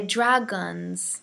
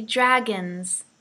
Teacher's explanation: so please look at this word dragons don't say drag guns it's not an all sound it's an O sound